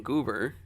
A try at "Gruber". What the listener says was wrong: Gruber, not Goober.